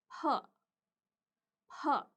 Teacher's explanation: huruf P sendiri dibaca dengan menambahkan aspirasi atau seperti ada bunyi H setelahnya